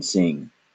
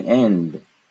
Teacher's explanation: both the N and the consonant that came after it are pronounced using the same method the same position of the tongue